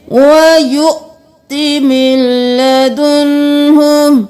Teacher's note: واو کو نہیں پڑھنا, حمزہ کو جھٹکا دے کر پڑھنا ہے